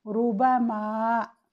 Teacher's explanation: रा के ऊपर ज़म्मा हो तो भी रा को तफ़ख़ीम से पढ़ते हैं